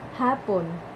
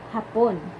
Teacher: malumanay ang pagbigkas at may diin sa unang pantig. Hapon, mabilis ang pagbigkas at may diin sa ikalawang pantig